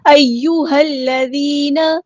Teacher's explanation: یا یہاں پہ تشدید والا ہے، اس کو دھیان سے ادا کرنا ہے، ایک بار ساکن کر کے ایک بار اس کی حرکت کے مطابق اسٹرینتھ کے ساتھ اس کو ادا کرنا ہے، جماؤ کے ساتھ۔